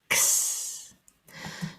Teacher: the sound for X is made by making the K and S sounds together